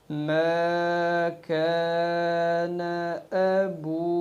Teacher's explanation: واو مدہ کی جو مقدار ہوگی وہ 2 سے 3 سیکنڈ پہ چلی جائے گی، یعنی 2 سے 3 سیکنڈ کھینچ کر پھر اگلے لفظ کو ساکن کریں گے، جیسے وقف ما کان ابوک، اس طریقے سے۔